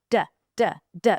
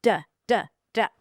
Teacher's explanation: The tip of the tongue goes right behind the teeth